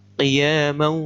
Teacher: Ini bacanya idgham bi gunnah, dengan mendengung.